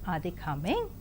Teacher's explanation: the rising tone is also used for polarity type of questions